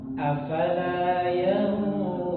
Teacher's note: Ikhfa pada ayat yang ke-17 itu dibaca dengan yang tebal.